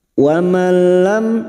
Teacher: hanya masuk tanpa mendengung tanpa ditahan lama-lama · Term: idgam bila guna